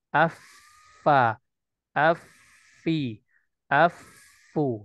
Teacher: desisan yang khas pada huruf Fa ketika pertemuan ujung ya daripada gigi seri kita bertemu dengan bagian perut bawah daripada bibir kita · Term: taafuf